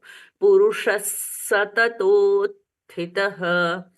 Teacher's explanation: स में दंतव्य क्यों बोलते हैं क्योंकि यहां पर टिप ऑफ द टंग छू जाती है दांतों को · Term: दंतव्य स